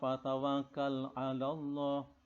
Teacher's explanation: Lafzul jalalah ini harus baca tafkhim tebal.